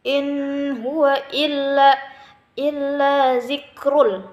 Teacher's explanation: Inhu, nun mati bertemu ha, hukumnya izhar, jelas